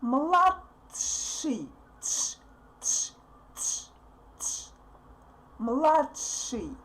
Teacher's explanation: we kind of want to say t, but we put our tongue on the top and don't put it down. So we don't pronounce t clearly. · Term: stopped sound